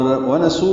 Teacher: واو ہونٹوں کی نا تمام گلائی سے ادا ہوگی